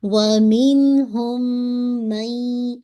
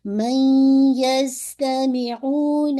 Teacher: جو 4 پرنسپل پڑھے ان میں سے ایک تھا ادغام، تو نون کی آواز جو ہے وہ یا کے اندر مرج ہو رہی ہے، لیکن یہ جو ادغام ہے کمپلیٹ نہیں ہے ، یعنی کمپلیٹلی نون ساکن کی آواز یا میں مرج نہیں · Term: انکمپلیٹ ادغام